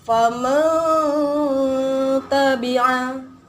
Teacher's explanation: Nun mati bertemu dengan huruf ta. Jadi bacanya disamarkan nun matinya kemudian didengungkan. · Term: ikhfa